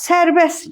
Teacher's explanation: iki kar samiti tələffüzdə T samiti səslənməyəcək. Qalacaq sərbəst kimi.